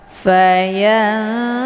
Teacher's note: Hukum bacaan ikhfa aqrab dibacanya sambil didengungkan.